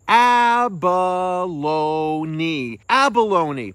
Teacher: It has four syllables. The stress is on that first syllable.